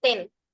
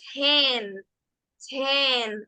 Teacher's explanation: aire antes de esa e entre la t y la H Se podría decir que entre la t y la e Se podría decir que hay una H que le marca